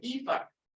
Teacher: some other people pronounce it Eva with the long E